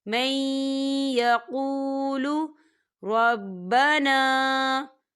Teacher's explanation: یہاں نون ساکن ہے اور نون ساکن کے بعد یا آ رہا ہے، اور یا جو ہے حروف یرملون میں سے ہے، تو یہاں پر ادغام ہوگا، تھوڑا سا غنّے کے ساتھ پڑھیں گے اسے